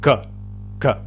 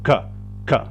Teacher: Las primeras letras suenan acá en la garganta, en el fondo, en el velo. Gutural se le llama.